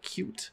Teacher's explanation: the palatal K in the word like cute